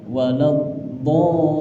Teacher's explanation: walad do-nya ini agak ditahan karena dia tasydid